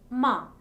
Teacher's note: air stream for a while the soft pallet is lowed and the air comes freely through the nasal cavity